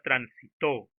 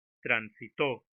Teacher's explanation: Por ejemplo, la palabra transitó. To es la última sílaba y es allí donde recae la mayor fuerza de voz. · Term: palabras agudas